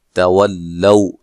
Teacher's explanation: واو کو ادا کرتے دونوں ہونٹوں کو گول کرنا ہے